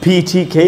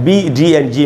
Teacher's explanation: फी ठी खे जो है वॉइसलेस है, वाइब्रेशन नहीं होती, एंड बी डी एंड जी में वाइब्रेशन होती है